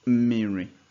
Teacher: So if you look closely here, it will seem as if it's spelled with two consonants together, M and M. But the first M is actually a vowel. So we have vowel, first M, vowel, second consonant.